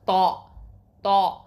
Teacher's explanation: தா அப்படின்னு சொல்லும் போது அந்த ஒலி என்னாகும், சவுண்டு வந்து மேல் முரசை நோக்கி போகணும்